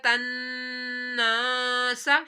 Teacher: نون کے اوپر ہم نے گنہ کیا، تناسا، کیونکہ نون کے اوپر تشدید ہے، نون میں شدت پر ہر حالت میں گنہ کیا جاتا ہے۔